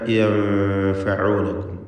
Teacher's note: ഇദ് തദ്ഊൻ ഔ യൻഫഊനകും, സാക്കിനത്തെ നൂനും ശേഷം ഫാഉം വീണ്ടും വന്നു. ഇഖ്ഫാ ഹഖീഖി നൽകി മറച്ച് മണിക്കുക, നൂനിനെ അവ്യക്തമാക്കി മണിച്ചുകൊണ്ട് ഉച്ചരിക്കുക. യൻഫഊനകും, മണിക്കൽ തർക്കീഖാണ് ഇവിടെയൊക്കെ.